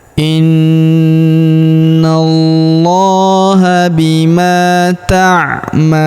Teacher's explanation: Huruf ma kita panjangkan 2 harokat karena terdapat alif di depannya